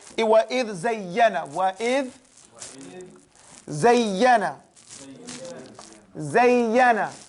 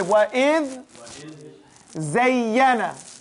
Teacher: So don't you see the dhal here and the zay? They're close in their makhraj and their sifat are similar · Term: متقربين